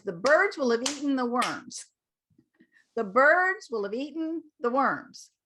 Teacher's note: so we'll have eaten gets reduced to will of